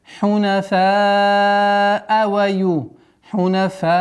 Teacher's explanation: Здесь уже соединительная долгота, когда долгая удлинительная буква и причина хамза находится в одном слове. 4 раза тянем.